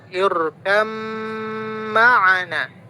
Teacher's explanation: di sini bacanya didengungkan ba bertemu dengan mim. Kenapa? Karena mim itu adalah huruf gunnah. Jadi didengungkan. Irkam langsung ke mim.